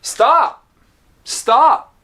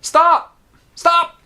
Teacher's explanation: And the P is unreleased. The lips stay together.